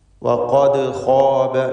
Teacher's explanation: ഖാഫും അതിൻ്റെ മഖ്റജിൽ നിന്ന് വ്യക്തമാക്കി ഉച്ചരിക്കുക. നാവിൻ്റെ അങ്ങേയറ്റം അഖ്സൽ ലിസാനാണ് ഖാഫിൻ്റെ മഖ്റജ്.